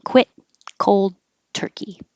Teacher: the T in quit and the D in cold, you won't hear.